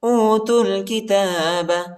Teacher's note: تا کو لام کے ساتھ ملائیں گے، واو الف اور یا الف نہیں پڑھا جاتا، ان حرفوں کے اوپر حرکت نہیں۔